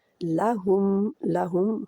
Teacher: हु के लिए होंठ बिल्कुल गोल हो जाएंगे